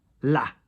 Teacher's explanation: Your A in French is higher